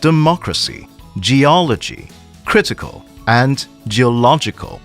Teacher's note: the word stress is on the anti penultimate syllable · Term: antepenultimate syllable